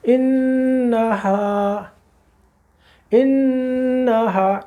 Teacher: نون مشدد ہے، غنہ کیجیے پورا، 2 سیکنڈ صرف، زیادہ نہیں لگتے بس